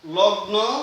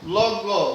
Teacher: লগ ঠিকই আছে, দন্ত ন হয়ে গেছে গ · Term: প্রগত সমীভবন